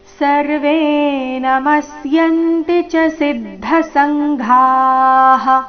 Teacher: ಕೊನೆಗೆ ಘ ಮಹಾಪ್ರಾಣ ದೀರ್ಘ